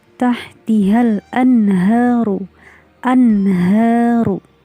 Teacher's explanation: nun sukunnya dibaca jelas karena dia bertemu dengan huruf H. Nun sukun bertemu huruf H. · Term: izhar